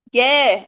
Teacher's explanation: Em guerra, quando eu falo guerra, é como se fosse só o G e o E. Não tem um som do U, não